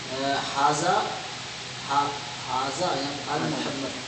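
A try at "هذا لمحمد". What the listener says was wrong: अल तो है नहीं, अल है नहीं, अल है नहीं ना, मोहम्मद पे अल आता ही नहीं ना, तो ली पढ़ो ना उसको, जेर लगा हुआ है ना लाम को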